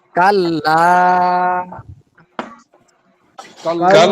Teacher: তিন আলিফ টান হবে